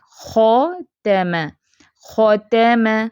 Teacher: خو موٹا، تا اور میم دونوں باریک